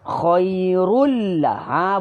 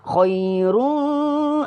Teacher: tak bunyi sengau, bunyi biasa je, normal.